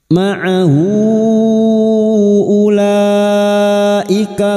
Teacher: ha damir yang berharakat panjang dan bertemu Hamzah mad silat thwilah lima harakat kita panjangkan